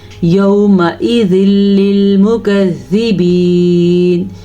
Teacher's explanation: ملانا تو ہے ہم نے، یومئذ مل گیا، لیکن غنہ نہیں کرنا آپ نے کیونکہ غنے کے بغیر والا ادغام ہے